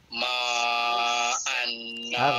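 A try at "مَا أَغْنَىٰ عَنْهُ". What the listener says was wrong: huruf ghain ma agna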